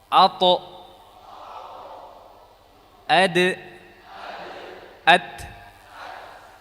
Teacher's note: Huruf ta, dal dan ta, ketiga huruf ini keluar dari ujung lidah bertemu dengan pangkal gisri atas.